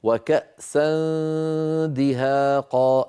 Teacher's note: أهيئ فمي على قرب مخرج الدال، فإذا انتهى صوت الغنة أقرع بطرف لساني مخرج الدال هكذا. وكأسا دي، وكأسا دي، لما أقول دي عندئذ أقرع مخرج الدال. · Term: إخفاء النون الساكنة